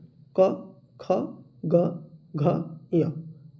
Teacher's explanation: क वर्ग का स्थान होता है कंठ का, जीवा के मध्य भाग से स्पर्श होता है।